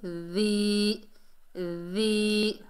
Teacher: زبان کی نوک جب اوپر والے دانتوں کے کنارے سے لگے تو ذال ادا ہوگا